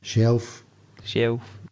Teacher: an older man who's saying shelf and he's got an l sound and the younger adolescent doesn't have it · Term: the L Sound